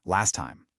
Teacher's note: Notice that the word last ends with a t sound and time starts with one. So, instead of saying last time with two hard T's hitting each other, they just merge into one. You get last time.